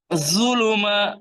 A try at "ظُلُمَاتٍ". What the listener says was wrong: আপনি, না আপনি হচ্ছে জু দিয়ে, জাই দিয়ে, র এর পরে যেটা যা সেটা দিয়ে বলতেছেন, এখানে লাগান জিহ্বা, জু, জু। তাহলে এই জিহ্বার আগা, উপরে দাঁতের আগা, ল, ল, জু,